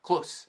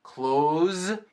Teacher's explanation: Close, com som de S. Close. Mas fechar é close, com Z.